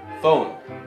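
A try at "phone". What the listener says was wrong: 폰 폰 그냥 오 발음 아니야 똑같이 그니까 아니야 아니야 들어봐 포 약간 포. 마지막에 그 오오오오 이렇게 하잖아 체리도 이렇게 하잖아 오오오오오오 포 포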